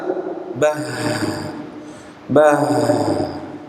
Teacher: huruf H dapat di alirkan makhrajnya ya suaranya dapat mengalir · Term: sifat ha